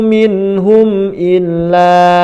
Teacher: illa panjang juga, ditahan, itu idgham bi gunnah